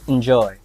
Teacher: The first syllable is not stressed. We should use the weak vowel sound instead.